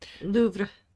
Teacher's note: You go Louvre, and then you go ra, like a little bit of rolling of the tongue